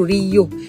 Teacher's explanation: terdapat geluncuran y di antara vokal I dan U